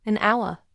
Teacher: Because the H is silent. The word starts with an ow sound, which is a vowel sound.